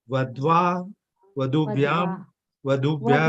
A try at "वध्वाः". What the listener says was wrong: वध्वाः विसर्ग का उच्चारण करना।